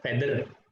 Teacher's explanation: So another cases is interdental th. It's also pronounced as alveolar d, as it encounter at the word feather.